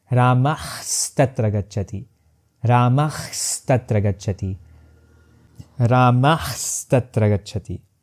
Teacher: In the second example, we have Ramah Tatra Gacchati, but when I say it in one breath, it becomes Ramah Tatra Gacchati, Ramah Tatra Gacchati, Ramah Tatra Gacchati. I try my best to maintain Visarga as a voiceless glottal fricative, but I end up transforming it automatically into half sa.